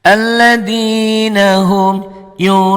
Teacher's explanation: Panjangnya 5 ketukan juga sama. Yura 5 ketukan, u juga 5 ketukan dengan catatan di sininya dihentikan. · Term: mad wajib mutasil